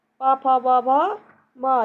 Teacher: पा, फा, बा, भा, मा, ये पांचों व्यंजन कहाँ से? ओष्ठ से बोले जाते हैं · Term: प वर्ग